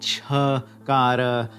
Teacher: the unvoiced aspirate palatal